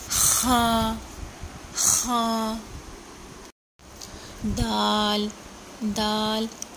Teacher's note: دال زبان کی نوک جب سامنے والے جو 2 دانت ہیں ان کے جڑوں سے ٹکراتی ہے تو دال ادا ہوتا ہے · خا گلے میں خراش پیدا ہوتی ہے، یہ گلے کے پہلے حصے سے ادا ہوتا ہے